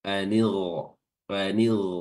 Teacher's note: Dia tebal ya. Huruf ghainnya tebal walaupun dia sukun dia harus kedengaran tebal.